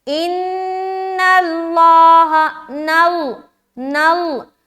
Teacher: نون باریک، لیکن جیسے ہی لام سے مل رہا ہے لام موٹا ہو جا رہا ہے